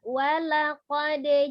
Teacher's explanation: Ayat 4, walaqad ja'ahum, walaqad, ada dal sukun dipantulkan, qalqalah temannya adalah ba, jim, dal, ko, dan kof ya, dibaca dipantulkan bunyinya ketika sukun.